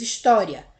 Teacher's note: O I é um pouco mais fraco do que o A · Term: semivogal